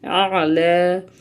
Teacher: یا کو ہم نے لام سے ملایا، اس کے بعد ہم نے حمزہ عین سے ملایا. عین جو ہے حروف حلقی کا حرف ہے اور یہ بھی حلق کے درمیان سے اس کو ہم نے ادا کرنا ہے